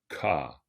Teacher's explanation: avec une légère alors aspiration ou expiration c'estàdire un léger souffle au moment de le dire